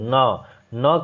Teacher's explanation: अब हमें न का उच्चारण स्थान बताना है। तो न का उच्चारण स्थान आपका नासिका से होता है।